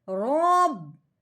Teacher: مشدد حرف جو بھی ہو وہ پچھلے والے کو اپنے ساتھ ملا لیتا ہے۔ اب اپنے رو کو با مشدد کے ساتھ ملاتے ہوئے دبا کے پڑھنا ہے، کیونکہ مشدد حرف جو بھی ہوتا ہے وہ ہمیشہ دباؤ، جماؤ اور ٹھہراؤ کے ساتھ پڑھا جاتا ہے۔